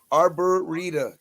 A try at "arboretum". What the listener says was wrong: Where's the M?